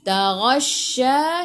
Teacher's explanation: Shin ada sabdu. Taghasya, shin sifat hurufnya tafashi, kena hambur